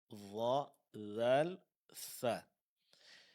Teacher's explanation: keluar dari ujung lidah disentuhkan ke ujung gigi seri atas